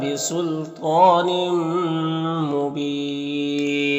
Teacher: تنوین کے بعد میم حروف یومین میں سے تو ادغام ناقص ہوگا اور یہاں پر وقف کریں گے تو مد عارض وقفی ہوگا.